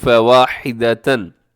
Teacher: फ़वाहिदतन में तनवीन के बाद हमज़ा है तो यहाँ भी इज़हार हलक़ी